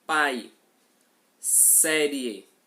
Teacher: O som sai absolutamente apenas pela boca. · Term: ditongo oral